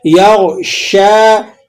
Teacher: اذا یغ، غین کو آپ نے موٹا پڑھنا ہے، یغ، غین موٹے حروفوں میں سے ہے۔ یغشا، شین کو آپ نے باریک سیٹی کے ساتھ پڑھنا ہے اور 1-2 الف تک اسے کھینچ بھی لینا ہے کیونکہ اس پر کھڑا زبر لگا ہوا ہے، اور ہا الف زبر ہا ہے تو اس کو بھی آپ نے الف مدہ کو 1 الف تک کھینچ لینا ہے۔